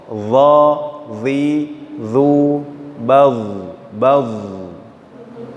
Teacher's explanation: huruf dha ini harus diisti'lakan atau huruf yang harus diangkat atau diarahkan suaranya.